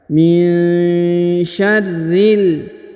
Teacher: Min syarril ya, huruf nun sukun bertemu huruf sya, maka didengungkan dan disamarkan